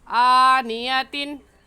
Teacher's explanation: तो आनियतिन पर हम गुन्ना नहीं करेंगे, क्योंकि तनवीन के बाद हुरूफ़ हल्की में से हमज़ा आ गया है, इसलिए हम इसे ऐसे पढ़ेंगे आनियतिन। आ को खींचेंगे क्योंकि खड़ी ज़बर है और खड़ी ज़बर को एक अलिफ के बराबर खींच कर पढ़ते हैं